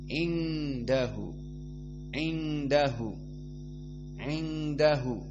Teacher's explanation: Maka indahu di sini hukumnya ikhfa, sehingga nun as-sakinah dibaca dengan ikhfa makhrajnya dari khayshum, dari hidung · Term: al-ikhfa al-hakiki